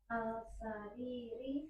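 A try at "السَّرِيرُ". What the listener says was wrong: Alif lamnya perhatikan. Kenapa kok ri? Karena nggak ada huruf jer.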